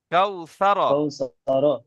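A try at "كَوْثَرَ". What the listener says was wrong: হ্যাঁ, এখানে কোনো টান নেই, তাহলে স্পিডে পড়তে হবে। কাউ সা র।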